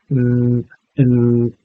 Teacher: The nasal stops, the n, and so on, block air from coming through the mouth, but there's airflow through the nose